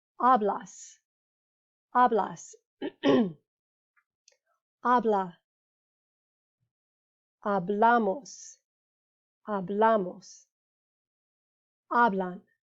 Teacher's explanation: all of the emphasis is on the second to last syllable